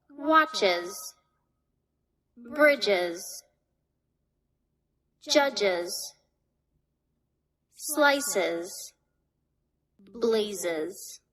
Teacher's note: The sounds that cause the plural S to be pronounced with an additional syllable include ch, j, s, z.